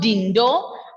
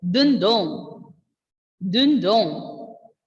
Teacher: Ending letter N will be silent. And the O sound will be nasal.